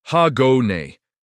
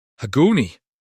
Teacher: The glottal stop at the end is important. It's a quick catch in your throat.